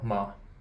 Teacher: the question particle ma it's neither high nor low nor going up or down · the fifth tone is like neutral, like it doesn't really have any specific pitch. Like the question particle, ma.